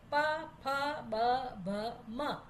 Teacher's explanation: ઓષ્ઠ્યા એ હોઠ ભેગા થાય તો જ આ ઉચ્ચારણ થાય